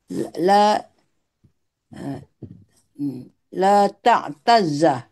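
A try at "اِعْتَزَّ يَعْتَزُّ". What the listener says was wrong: Nah, bagus.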